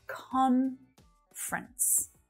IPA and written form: 'kɒn frəns (Conference)